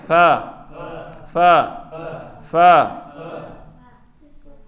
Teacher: ثناء علیہ کا کنارہ اور نچلے ہونٹ کے وسط سے فا ادا ہوتا ہے. ثناء علیہ کا کنارہ ہو گئے یہ، اور نیچے والے ہونٹ کا وسط درمیانی حصہ، گیلا والا حصہ، تو وہاں سے ہم فا ادا کرتے ہیں.